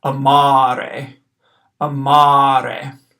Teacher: I'm gonna hold out that second a a little bit longer than the first one · So if we look at this Latin word that I've written at the bottom of this slide, we see it's spelled A-M, long A, R-E. The first A is short, the second A is long, so I'm going to hold out that second A a little bit longer than the first one. · First A short, second A long